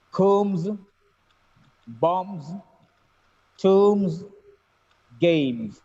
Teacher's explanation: the words have b at the end, but the last sound is m. B is silent here. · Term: m sound